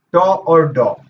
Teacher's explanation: ट और ड जो हैं वह मूर्धा से उच्चरित होते हैं